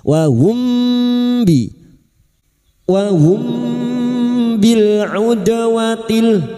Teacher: Mim sukun lagi bertemu ba, ikhfa syafawi. Kita samarkan bunyi mim sukun dan siap membunyikan huruf ba. Kita tinggungkan selama 3 harokat.